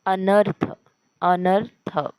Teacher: जोड शब्द झालेला आहे थ च उच्चारण आपण पूर्ण करणार आहोत थ अक्षराच आणि अर्ध्या र च उच्चारण थ मध्ये आपण मिसळून करणार आहोत अनर्थ अनर्थ तर या ठिकाणी हा जोड शब्द जोड अक्षर झालेय